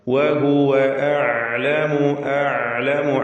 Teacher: വഹുവ വാവുകൾ വ്യക്തമായി ചുണ്ടിൽ നിന്ന് തന്നെ ഉച്ചരിക്കുക. 2 ചുണ്ടുകൾ ചേർത്ത് വാവ്. വഹുവ അഅലമു, അഅലമു ഐന് വ്യക്തമാക്കുക, തവസ്സുത്തിന്റെ ഹർഫാണ്.